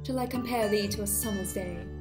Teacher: each foot has one unstressed syllable followed by one stressed syllable